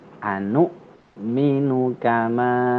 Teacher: Tadi anu minu itu ada hamzah ya, pada waw di atas huruf waw ada hamzah sukun, hamzah mati, maka dibacanya ditekan